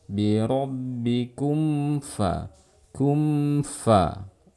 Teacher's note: ada gunnah yang mengalir meskipun sedikit. Memang nggak boleh panjang karena kadar gunnah di sini tidak boleh dipanjangkan.